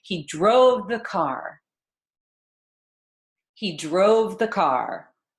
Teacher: we have the pronoun he and the article the. So we're going to rush those words and then we'll linger on our content words, our verb drove and our noun car. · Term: linger and the rush